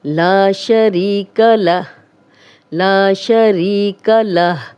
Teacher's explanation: ला हम लंबा कर रहे हैं, ये अलिफ मद्दा है, खाली अलिफ, पीछे लाम पे ज़बर है, तो ऊपर मड भी डली हुई है।